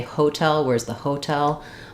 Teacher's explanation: the rhythm of that word is hotel with second syllable stress